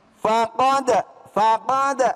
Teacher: Nah dal itu bertemu dengan jim ya kan. Maka di situ dibaca qalqalah ya, kudu mantul ya kan.